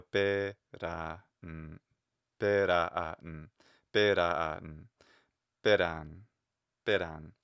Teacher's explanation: It's the first mora of the ran syllable that needs to be lower than the pe. That fall, that's the perception of the pitch accent.